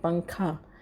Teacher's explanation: نون کی آواز کو ناک میں چھپا کر پڑھنا چاہیے، جیسے اردو میں پنکھا کے نون کو پڑھتے ہیں۔ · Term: اخفا